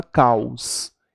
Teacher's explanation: o o tem som de u logo ele é uma semivogal